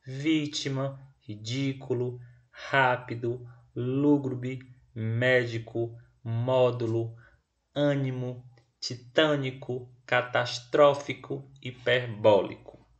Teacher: Todas são acentuadas e todas são proparoxítonas. Significa dizer que todas possuem a antepenúltima sílaba tônica.